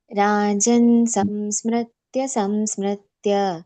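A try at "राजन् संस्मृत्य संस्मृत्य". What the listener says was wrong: ಇಲ್ಲ ಮ ಬರೋದಿಲ್ಲ ಮಾತಾಜಿ ಅಲ್ಲಿ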